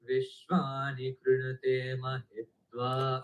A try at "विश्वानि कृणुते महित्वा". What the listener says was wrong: अगेन ते அவசரப்படக்கூடாது. कृणते ते दीर्घम.